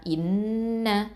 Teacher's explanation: நூன் வந்து முஷத்ததா, அப்போது வந்து இது என்னது, அக்மல் குன்னா, முழுமையாக குன்னா கொடுக்கணும்